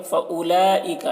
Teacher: वाव को नहीं पढ़ा जा रहा है, वाव में कोई हरकत नहीं है तो फ़उलाइका पढ़ेंगे।